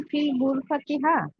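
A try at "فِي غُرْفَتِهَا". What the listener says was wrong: ফিল কোথায় পান আপনি? আলিফ লাম তো নাই, ফি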